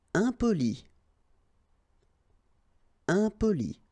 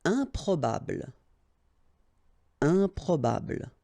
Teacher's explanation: Keep in mind that when you add this em at the beginning of all the words, you will get the nasal sound un. Okay, you don't pronounce the m, but it goes like un